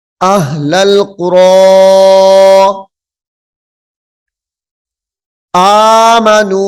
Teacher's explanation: حمزہ ہا زبر پھر لام کو لام کے ساتھ ملائیں گے